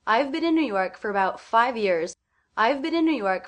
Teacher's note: 5 and years are both given more time because they're stressed.